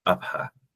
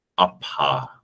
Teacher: to me the H sounds like a delayed release of the preceding stop. It doesn't sound like a extra closure. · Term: aspirated P